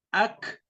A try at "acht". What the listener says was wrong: Bukan akt, acht. CH dibaca acht ya.